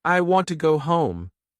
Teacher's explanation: Now try again. Stress want and home.